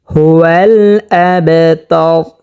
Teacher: হাকে স্পষ্টভাবে হলকের শুরু থেকে উচ্চারণ করতে হবে